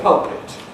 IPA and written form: ˈpʌlpɪt (pulpit)